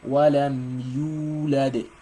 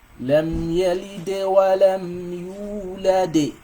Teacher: Because of this waw. This waw is a mad letter, and it elongates the u for 2 seconds.